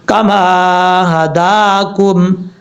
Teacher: کاف زبر کا، میم الف زبر ما، کما، ہا زبر ہا، دال کھڑا زبر دا، کاف میم پشکم، کما ہداکم، ہا بھاری ساؤنڈ کے ساتھ پڑھا جائے گا، اور دال کے اوپر کھڑا زبر ہے، ایک الف کی مقدار لمبا کریں گے